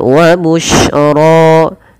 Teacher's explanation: shin itu memiliki salah satu sifat namanya tafasyi. Apa itu tafasyi? Yaitu intisyarus saut, menyebarnya suara di dalam mulut.